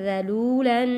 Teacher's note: زال کو نرمی کے ساتھ پڑھنا ہے، زا نہیں پڑھنا